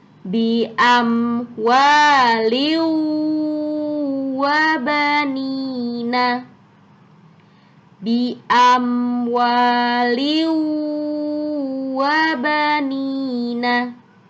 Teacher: harus lebur tanwinnya harus hilang suaranya masuk ke huruf wawya